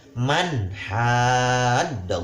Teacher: Tidak boleh mang atau mah. Harus jelas nunnya terbaca.